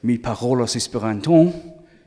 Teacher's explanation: That French style of of putting a nasal sound on the N at the end and not necessarily pronouncing the R like that, and putting the stress in the wrong place, because in French it's always at the end.